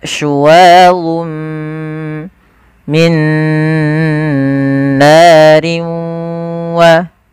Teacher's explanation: idgham yang masih menyisihkan suara bunyi nun sedikit saja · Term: idgham naqis